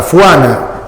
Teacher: fonético por fuana f en vez de J eso es un dialecto amazónico del Perú